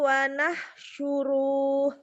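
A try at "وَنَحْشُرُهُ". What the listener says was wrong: Pendek. Wanah suruh. Wanah suruh. Wanah suruh.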